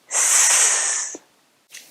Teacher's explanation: Your tongue is also touching behind the front teeth, but as you make the sound, it also touches the teeth on the sides, and the air doesn't vibrate when you make the sound. Think of the sound a snake makes. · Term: S sound